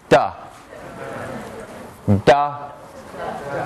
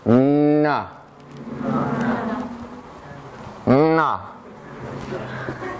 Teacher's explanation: It's voiced, it's alveolar, but it's nasal too. It is na. Na.